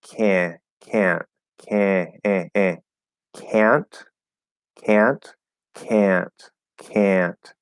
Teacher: we can actually let that nasal come through a little bit on the ah